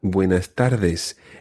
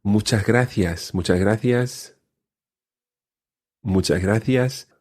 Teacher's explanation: you may hear the S being swallowed a little, particularly in, for example, buenas tardes.